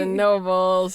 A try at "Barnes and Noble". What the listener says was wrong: It's Barnes and Noble. There is no plural nobles.